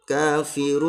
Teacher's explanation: Nah, ini panjang harus mad arid li sukun, panjangnya 2,5 alif. Enggak boleh kita membacanya 1 alif ya.